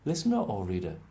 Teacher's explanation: maybe you put in a little R to join the two together